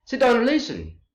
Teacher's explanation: So imperative sentences give commands or orders or directions. They end with a period to show the falling tone.